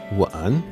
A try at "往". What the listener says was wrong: 往. 往 with a G in the end. King is 王, is the second tone. 往 is the third tone.